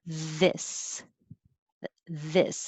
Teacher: are th words voiced th so they have vibration airflow and vibration